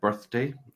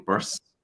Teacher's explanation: you're making s instead of a th sound